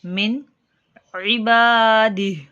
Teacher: حلق کے درمیان والے حصے سے عین کی ادائیگی